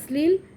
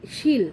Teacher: শ্লীল বানানের তালব্যস্যটা দন্তস্বর মতো উচ্চারণ হচ্ছে, কিন্তু শিল বানানের তালব্যস্যটা তালব্যস্যর মতোই উচ্চারণ হচ্ছে